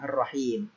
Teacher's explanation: Artinya alif lam tidak dibaca atau lamnya digugurkan, masuk ke huruf setelahnya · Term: alif lam syamsiyah